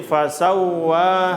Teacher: Ingat wawu tasdid tidak dengung.